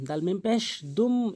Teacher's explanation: এটি গুণনা করবেন, মিমে বা নুনে তাসদিদ থাকলে গুণনা করতে হয়।